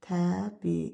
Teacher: i'nin biri düşəcək, biri uzun tələffüz olunacaq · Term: uzun sait